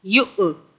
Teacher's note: یا واو کے اوپر جو ہے حمزہ ہے، جب حمزہ آئے تو یہاں جھٹکے سے پڑھتے ہیں۔ یا حمزہ پیش، یؤ، تا لام زیر تل، یؤتل، ہا کاف زیر حک، میم زبر ما، تا زبر تا، یؤتل حکمت۔